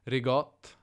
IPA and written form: ɹɪˈɡɔt (ricotta)